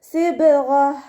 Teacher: ഇനി നമ്മളിവിടെ വഖഫ് ചെയ്യുകയാണെങ്കിൽ ത മർബൂത്തയിൽ വഖഫ് ചെയ്യുമ്പോൾ ഹ സുക്കൂനിൻ്റെ സൗണ്ട് കൊടുത്തിട്ടാണ് നമ്മൾ വഖഫ് ചെയ്യേണ്ടത്. സിബ്അത്ത് എന്ന് പറഞ്ഞിട്ട് നമ്മളവിടെ വഖഫ് ചെയ്യൂല, ഹ സുക്കൂനിൻ്റെ സൗണ്ട് കൊടുക്കുക കേട്ടോ.